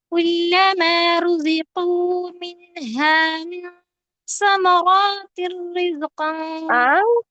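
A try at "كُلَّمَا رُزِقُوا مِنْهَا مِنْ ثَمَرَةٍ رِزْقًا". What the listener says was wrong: ثمرات، یہاں پہ رو کے بعد الف مجھے تو نہیں نظر آ رہا ہے کیا؟ نہیں ہے نا، تو ہم لمبا نہیں کریں گے.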